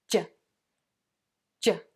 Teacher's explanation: the sides of your tongue are pressed against the inside of your back top teeth, stopping the air as it comes into the mouth and then releasing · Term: J sound